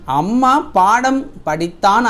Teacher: அம்மா, பாடம், படித்தான் ஆகிய சொற்களில் மகர மெய்யெழுத்து தனக்குரிய அரை மாத்திரை அளவில் முழுமையாக ஒலிக்குது